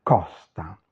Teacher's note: la costa, la costa. En italien, c'est ouvert, costa.